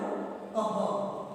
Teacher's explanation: विसर्ग जिसे कहते हैं उसका उच्चारण ह होता है। क जोड़ कह।